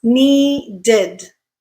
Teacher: in English there is no concept of a double sound so to add that second D sound you have to insert a vowel in the middle